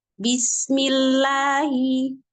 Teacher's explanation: Diawali dengan huruf mim yang berharokat kasroh. Maka lafaz Allahnya baca tipis saja.